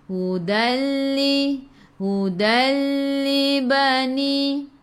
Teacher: Ingat dia kelas, bila idgham bila gunnah ada 2 huruf sahaja, lam dengan ra. Kita masuk sahaja, tak perlu dengung apabila nun mati atau tanwin bertemu dengan lam ataupun ra